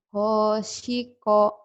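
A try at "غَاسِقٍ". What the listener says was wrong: Go. Bukan ho. Orang Jawa. Ho-nya. Go-nya ke ho. Go. Go. Go. Go.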